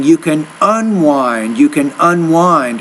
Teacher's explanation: the stress there should be on that second syllable of that word, not the first one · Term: word stress